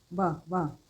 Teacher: व अगर आप बोल के देखें, देखो व, दांत और होठ इसमें टच होते हैं, इसलिए दंतोष्ठ्य कहलाता है।